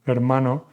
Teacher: The H is completely silent. We do not pronounce it.